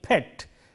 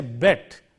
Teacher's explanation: Between these two words, the difference has come about just by changing p into b. The p is voiceless, whereas the b is voiced.